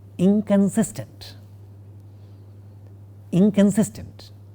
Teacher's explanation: the nasal part of the negative prefix in the word inconsistent is a velar nasal, not a dental nasal, and it's totally unlike how it is written.